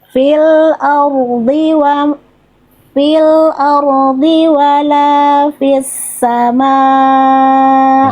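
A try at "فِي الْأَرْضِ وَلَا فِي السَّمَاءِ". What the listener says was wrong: Jadi ketika dotnya udah nggak kepanjangan, tapi dotnya kurang tebal, tetap harus tebal maksimal.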